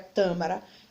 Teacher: ele tem a sílaba mais forte na antepenultima e é acentuada pois toda a palavra proparoxítona é acentuada então